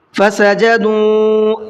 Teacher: واو کے اوپر چھوٹا مد ہے تو اس کو 1 سے 3 الف کی برابر کھینچ کر کے پڑھنا ہے